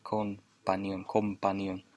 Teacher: Con, of course, becomes com to make the MP smoother to pronounce.